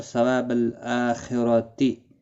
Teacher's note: را زبر کی وجہ سے پر پڑا جائے گا، خا حروف مستعلیہ ہے اور یہاں حمزہ کے اوپر کھڑی زبر ہے، ایک الف کی مقدار کے برابر کھینچ کر پڑھیں گے، لام ساکن کو ہلانا نہیں۔